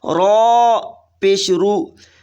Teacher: را پر پیش ہو تو را کو موٹی آواز میں پڑھیں گے